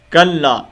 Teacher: چھوٹی مد ہے، اور اس کو ہم 2 الف کے مطابق لمبا کریں گے